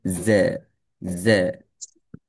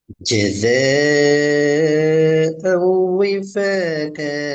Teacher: நாவானது கீழ்ப்பற்களோட கீழ்ப்பகுதியோடு இருக்கும். முன்பற்களோட கீழ்ப்பகுதிக்குள் இருந்து கொண்டு தான் இதை ஃபோர்ஸ் பண்ணணும். ஜ ஜ என்று கீழ் நோக்கி எங்களை ஃபோர்ஸ் பண்ணும் இந்த எழுத்தை உச்சரிக்கிறதுல. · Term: ஜெட் சவுண்ட்